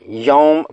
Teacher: یہاں یوما میں یو واو لین ہے، اسے معروف طریقے سے بغیر کھینچے نرمی سے یوم پڑھیں، میم باریک پڑھی جائے گی۔